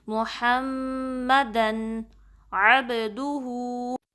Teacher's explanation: آئین کو وسط الحلق سے نکالنا ہے، درمیانے حصے سے حلق کے